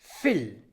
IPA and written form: fiːl (viel)